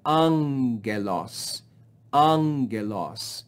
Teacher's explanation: so we have no breathing on this first sound and we rise in pitch on this first syllable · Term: acute accent mark